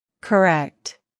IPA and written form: kəˈrɛkt (correct)